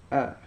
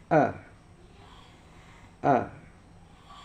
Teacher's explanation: Alif itu tempatnya di leher. Leher bagian belakang.